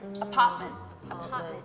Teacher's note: the r t sound is like you cut it off at the back of your throat